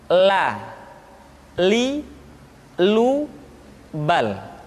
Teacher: huruf la diucapkan dengan mengangkat ujung lidah kita dengan disentuhkan dengan langit-langit.